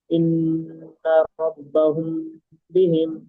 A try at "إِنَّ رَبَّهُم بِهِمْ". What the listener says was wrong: গুন্না একটু বেশি করতে হবে। রব্বাহুম বিহিম।